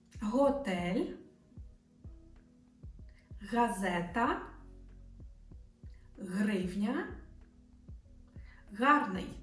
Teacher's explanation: in pronouncing H, the root of the tongue approaches but doesn't touch the back of the throat. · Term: Ukrainian H